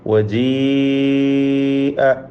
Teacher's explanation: യാഇന് മദ് മുത്തസിൽ വാജിബ് നൽകി 4-5 ഹറക്കത്തിൻ്റെ അളവിൽ ദീർഘിപ്പിക്കൽ നിർബന്ധമാണ്. · അതിൻ്റെ സൂചനയായിട്ടാണ് അതിന് മുകളിൽ ഒരു വൃത്താകൃതിയിലുള്ള ചിഹ്നം കൊടുത്തിട്ടുള്ളത്. അതുകൊണ്ട് യാ മാത്രമാണ് ഉച്ചരിക്കേണ്ടത്, അലിഫ് ഉച്ചരിക്കുകയില്ല.